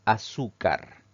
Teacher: vocal la siguiente palabra es azúcar esta palabra tiene tres sílabas al pronunciarla la mayor fuerza de voz recae en la penúltima sílaba · la mayor intensidad o fuerza de voz recae en la penúltima sílaba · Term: palabra grave